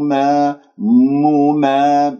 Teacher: وأعلم ما مما ميم مضمومة ثم ميم مفتوحة وأعطي كل حرف حقه من الحركة. وأعلم ما هنا عندك ألف ساكن قبلها مفتوح راح يكون عندي ما الطبيعي حركتين وإحنا نأكل المدود الطبيعية، انتبهوا.